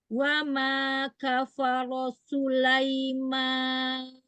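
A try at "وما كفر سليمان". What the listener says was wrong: Iya, roknya selesaikan dulu. Wa ma kafara Sulaiman. Jangan su. Tipiskan lagi sinnya.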